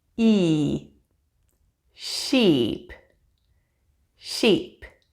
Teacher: the long e sound in sheep is made with your lips held wide your tongue forward to the front of your mouth and your jaw only very slightly open